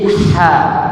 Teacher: Tenggorokan bagian tengah. Maka ketemu huruf H yang fasih.